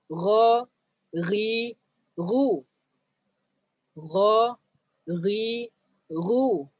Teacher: Jadi gha, ghi, ru pun keluar dekat hujung halqum. Bila kamu sebut huruf ghin, kamu akan terasa dekat hujung halqum.